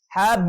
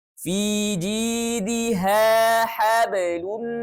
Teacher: Nah, kalau huruf qalqalahnya berada di tengah-tengah kata atau bukan di waqaf intinya dan berharokat sukun, maka kita hukumi qalqalah sughra. Pantulannya kecil ya, tidak terdengar jelas.